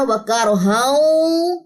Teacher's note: وَكَرْهًا ایک زبر گرے گی، ایک زبر الف کے ساتھ مل کے لمبی ہو جائے گی اگر وقف کرنا ہے. اگر وقف نہیں کرنا وَكَرْهًا تو یہاں پہ ادغام ہوگا، یعنی کہ غنہ ادغام مع الغنہ